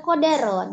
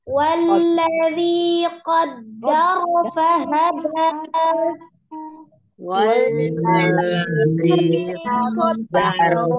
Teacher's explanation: Jangan kodaro, dalnya ada tasdid, tapi dalnya sidah. Dalnya sifatnya sidah, tidak mengalir.